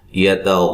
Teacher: غین کو موٹا ادا کریں گے، اور الف بھی موٹا ہو رہا ہے